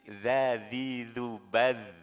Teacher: Harus bisa membedakan antara huruf za dan dha, ya. Cirinya lidah kita ketika kita membunyikan za itu keluar sedikit